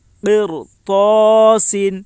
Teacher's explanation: رائے ساکنہ سے پہلے زیر ہے، لیکن اس را کے بعد حروف مستعلیہ کے ساتھ حرفوں میں سے طا ہے، اس لیے رائے ساکنہ پر ہوگی